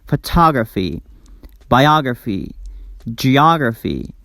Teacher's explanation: the vowel before the suffix is always pronounced like ah sound